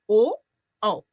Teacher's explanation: इसी प्रकार से ओ दौतोह कंठोष्ठम, ओ और औ, इनका उच्चारण स्थान कंठ और ओष्ठ होता है